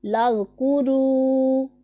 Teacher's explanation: اور ذال میں ہم نے سیٹی کی آواز بالکل بھی نہیں نکالنی، اسے ہم نے بغیر سیٹی کے پڑھنا ہے۔ لذکروا، اور یہ والا کاف باریک پڑھا جانے والا حرف ہے، اسے ہم باریک پڑھیں گے، اور را کے اوپر پیش ہے تو را کو پر پڑھا جائے گا، اور یہاں پر واو مدہ ہو رہا ہے جسے ہم 1 الف کے جتنا کھینچ کے لمبا کر کے پڑھیں گے۔